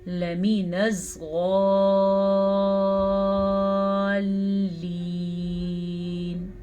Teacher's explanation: یاد رکھیں جب مد کے بعد شد آ جائے تو پھر مد لمبی مد ہے یہ